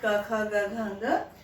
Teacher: यहाँ पर क जो है, क वर्ग, उसका उच्चारण स्थान जिह्वा मूले, जिह्वा के मूल में जो हमारे जिह्वा के पीछे, वहां से इसका उच्चारण स्थान होता है